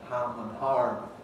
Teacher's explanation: in the west of england where r is retained